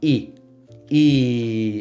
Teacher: It's the same frequency, same sound. You don't have to bend it up and down. · Spanish, it's just the beginning part of those, really. It's not I, but it's E. And it just stays at E. It doesn't bend up and down.